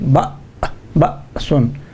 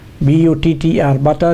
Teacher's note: It is a glottal stop. The vocal cords, they come together and close the air passage.